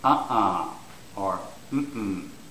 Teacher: for no, it's the first syllable which is stressed.